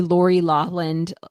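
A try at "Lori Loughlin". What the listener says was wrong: Lawland? You silent that GH? Laughlin.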